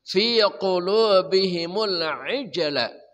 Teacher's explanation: jim qalqalah sughra memantul